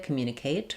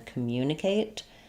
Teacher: in American English, we stress on the second syllable mu.